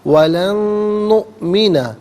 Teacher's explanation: نؤمنہ میں آپ دیکھیں حمزہ ساکن ہے، اسے جھٹکے کے ساتھ پڑھا جائے گا